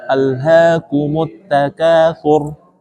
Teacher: Kunci dari tebal dan tipis adalah terangkat atau tidaknya lidah. Kalau di takatsur tebal nih, punggung lidah diangkat. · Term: ro tebal